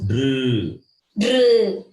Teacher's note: It is not drew. There is no ukara, u sound. There is no rounding of lips.